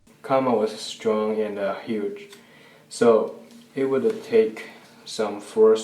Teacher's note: he also says woulda take instead of just would take.